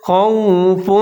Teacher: ہے، لام الف لا، فلا خوف، خو کے اوپر زبر ہے، واو کے اوپر ساکن ہے تو ہونٹ گول کریں گے ، خوا کے ساتھ ملا کے پڑھیں گے، خوف، فا کے